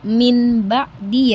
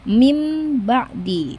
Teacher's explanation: nun sukun dan nun sukunnya itu diganti menjadi huruf mim